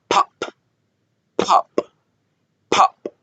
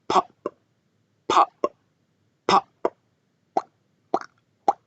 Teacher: El aire necesita salir y hace que los labios exploten. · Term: la plosión